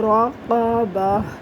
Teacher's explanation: جب اس میں وقف کیا جاتا ہے تو یہ گول تا وقف میں ہا بن جاتی ہے، راقبہ۔ سین پیش سو، را پیش رو، سورو، را دو پیش رن، سورورن، آگے وقف، سورور۔